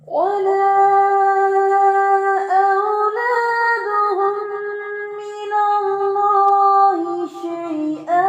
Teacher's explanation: دوسری چیز ولا اولادہم, اولادہم کا جو حمزہ ہے اس کو بھی آپ نے ویک کر دیا تھا, اسٹرانگلی پڑھنا ہے سختی سے